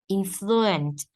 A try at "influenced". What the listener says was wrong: Influenced. There's a D.